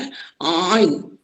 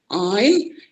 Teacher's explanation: Ain. Huruf ain juga di sini adalah daripada tengah kerongkong. Apabila kita menyebutnya, suara sedikit tertekan